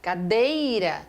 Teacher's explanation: na palavra cadeira, cadeira, o E é mais forte que o I. O I não tem condições de ser vogal na palavra cadeira.